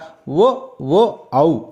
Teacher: ఓ ఓ ఔ ఈ మూడు అక్షరాన్ని కంఠోష్ట్యాలు అంటారు